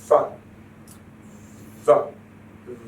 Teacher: you will find that the lower lip touches the upper teeth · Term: labiodental